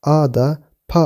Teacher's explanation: Akaça fonetik sisteminde a açık bir ön ünlü, da diş eti bölgesinde oluşan bir hece, pa ise çift dudak ünsüzü ile başlayan açık bir hecedir.